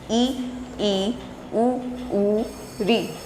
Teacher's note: संवृत यानी बंद, बंद अर्थात जब उच्चारण करते समय हमारा जो मुख है वो बंद ही रहता है, ज़्यादा खुला हुआ दिखाई नहीं देता, तो वो संवृत होता है।